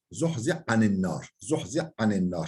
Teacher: Ha harfi ayn harfinde idgam oluyor.